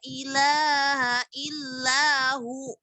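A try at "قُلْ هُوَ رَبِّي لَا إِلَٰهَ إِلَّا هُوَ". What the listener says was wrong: Bukan hu. Kenapa salahnya apa itu? Illahu. Berhentinya jadi mat. Kalau berhenti mat, bukan berhenti sama hamzah sukun.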